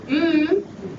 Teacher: my lips are coming together that's called a bilabial sound